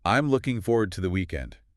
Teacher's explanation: listen closely to the word to. In natural speech, it almost completely loses its vowel. It sounds like tuh or just a sharp t.